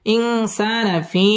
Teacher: ফি মধ্যে মুনফাসিল তিন আলিফ টেনে পড়তে হবে